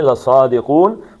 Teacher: صاد کو موٹا پڑھنا ہے، 2 حرکتیں، لَصَادِقُون، کو 2 حرکتیں تھیں لیکن عارضی طور پہ نون ساکن ہوا تو اس کو 5 حرکتیں کھینچ لیں گے۔